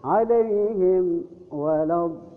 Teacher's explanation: harus bibirnya dirapatkan, ya, harus jelas. Itu disebut dengan izhar safawi.